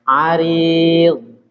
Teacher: huruf ra di kasra dia tipis saja